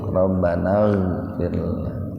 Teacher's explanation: fir tarkik, ra sukun didahului kasrah. Jadi ra-nya dibaca tipis.